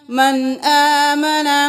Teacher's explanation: والصابئین من آمن، دیر نہیں لگانی. یہاں پہ نون ساکن ہے لیکن آگے حمزہ آ گیا ہے تو یہاں پہ غنہ نہ کریں